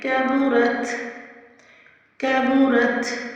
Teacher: یہاں پہ اپنے مد کو 5 to 6 کاؤنٹس پڑھنا ہے۔ کیبورت میں کاف کو باریکی سے ادا کرنا ہے اور با کی پیش کو لمبا نہیں کرنا